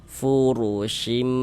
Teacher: Huruf ro memiliki harakat dommah. Ini huruf ro dibaca tabkhim dibaca tebal sehingga dengan menaikkan pangkal lidah kita ketika kita mengucapkannya.